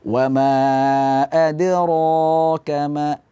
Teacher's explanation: tidak sampai ada hamzah di situ. Jadi cukup dipantulkan saja. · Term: qalqalah